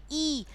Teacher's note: तो हमारी जीभ तालुओं को टच करती है, तो वह निकलते हैं तालु से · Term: ई स्वर